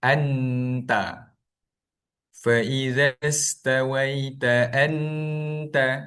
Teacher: bunyi nun tu akan jadi jelas, akan jadi izhar padahal hukumnya ikhfa hakiki